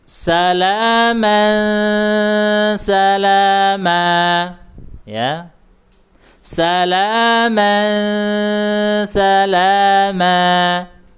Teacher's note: Kemudian huruf sa sama huruf sin huruf za itu sama ya makhrajnya sama. Ujung lidah ada di gigi bawah ya.